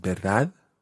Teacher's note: It's almost got a silent D on the end.